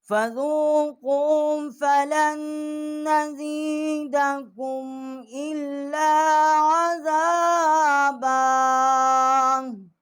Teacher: لام جو ہے ہم نے اس کو نون کے ساتھ جو ہے مشدد کیا ہے اور یہاں غنہ کیا ہے۔ حمزہ کو ہم نے لام کے ساتھ جو ہے وہ مشدد کیا ہے۔